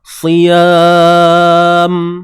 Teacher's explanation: Hujung sekali tutup bibir mulut kita. Berbalik pada makhraj huruf mim. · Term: mim mati